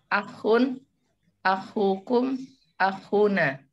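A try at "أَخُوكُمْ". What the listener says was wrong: Aywa, akhukum, akhuna ya. Di situ harus ada diperjelas, di situ ada ayunan suara 2 harokat. Akhukum, akhuna.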